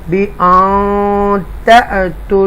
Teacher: حمزہ ہے اور وہ ساکن ہے تو ٹوچ کریں گے، جرک سے پڑھیں گے